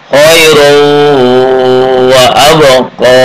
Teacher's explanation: Asalnya khairun wa abqa. Karena huruf idgham bi gunnah maka tanwinnya luluh ke wawu